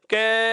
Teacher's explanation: जैसे ही आप इस कै वर्ण का उच्चारण करेंगे तो कै को जैसे ही लंबा बोलते हैं कै, अर्थात अंत में हमें ए की ध्वनि सुनाई देने लग जाती है।